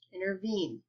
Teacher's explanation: see how the last syllable of that word is stressed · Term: antacid